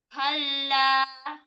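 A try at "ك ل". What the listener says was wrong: Ini masih gini. Kal, al, al. Nah, ini jangan al, tapi kal. Yang naik lidahnya aja. Rahang bawah nggak usah ikut naik juga. Kala. Kala. Kala. Maka huruf kafnya ambilnya memang harus lebih lebar. Nggak bisa begini. Kala, kala. Jadi kal. Kal. Jadi ka. Ka. Nggak mau ka. Maunya ka.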